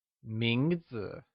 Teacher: 名字 is pronounced with the mid-rising tone.